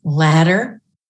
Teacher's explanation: words like ladder where it's a tongue flap